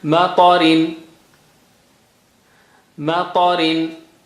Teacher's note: Ta is high sounding, very thick and high sounding.